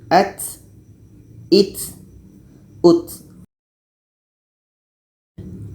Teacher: Ta ini letaknya pada ujung lidah menempel dengan pangkal gigi seri atas. Ujung lidah menempel dengan pangkal gigi seri atas. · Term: hamas